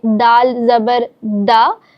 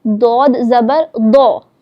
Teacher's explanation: لیکن ہم کیونکہ یہ بات جانتے ہیں، ہم سیکھ رہے ہیں کہ دال باریک پڑھا جاتا ہے اور دود پر یعنی موٹا کر کے پڑھا جاتا ہے